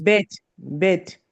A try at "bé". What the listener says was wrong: Non, non, non. Là, le bête, c'est ici, hein, le bête. Et non, c'est bé. Il faut pas, c'est pas bête, c'est bé.